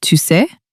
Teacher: With a playful upward pitch